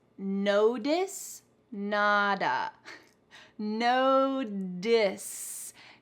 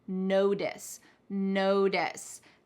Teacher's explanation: Do you see there's a T, but your ears, do they hear a T?